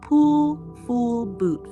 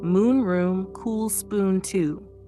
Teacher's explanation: Now let's try the long sound, the long oo. This sound is longer and deeper. You round your lips more and hold the sound.